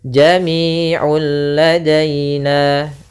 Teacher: langsung hilang seluruhnya suara nunnya sehingga langsung masuk kepada huruf lam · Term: idgham kamil